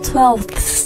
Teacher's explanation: 这个咬舌音呢会被弱化一点但是你不能直接把它省略掉不念